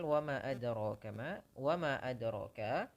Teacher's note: Mad jaiz itu dipanjangkan setidaknya 4 harokat. 4 harokat. Atau ada yang mengatakan 5, tapi kalau dari jalur Syatibiyah, Tariq Syatibiyah itu 4 harokat saja.